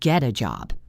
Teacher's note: The T in get is between the E in get and the A sound, so it flaps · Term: flap T